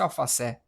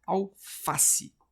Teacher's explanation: a sílaba tônica ela é a penúltima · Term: paroxítona